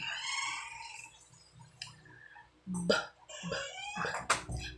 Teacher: Ang paraan dito ay pasara. Biglang haharang at bibitawan ang hangin.